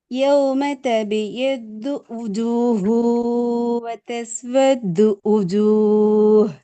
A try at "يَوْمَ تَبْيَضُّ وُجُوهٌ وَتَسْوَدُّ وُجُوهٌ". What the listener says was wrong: இந்த வேர்டு உச்சரிக்கிறதுக்கும் நீங்க ஊண்டு உச்சரிக்க வித்தியாசம் இருக்குது. வ என்று மிக தெளிவா வருது வ. அப்ப அந்த வ தானே லமத்தினுடைய சந்தர்ப்பத்துல வு என்று வரணும். சந்தர்ப்பத்துல அது ஊண்டே வருது. வ வு வ உ வ உ அல்ல வ வு.